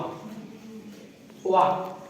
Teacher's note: वा को कहते हैं दंतोष्ठ। दांत और ओष्ठ की सहायता से बोले जाते हैं